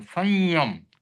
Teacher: तो संयम का उच्चारण न नहीं आता है, नासिका से आता है, वो संयम इस प्रकार से उच्चारण होता है।